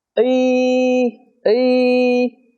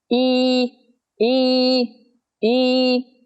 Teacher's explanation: Trong tiếng Việt, iiiii Nghe nó nhẹ hơn và không căng.